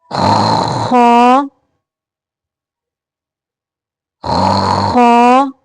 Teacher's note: ادنائی حلق سے یعنی حلق کا وہ حصہ جو منہ کی طرف ہے وہاں سے خا